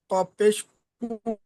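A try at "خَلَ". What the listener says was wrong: কপ পেশ কু নয়, খ লাম যাবার খল। কপের উপরে পেশ এসছে, তারপরে লামের উপরে তাসদিদ এসছে, তাহলে কপটা গিয়ে লামের সাথে গিয়ে মেলাতে হবে।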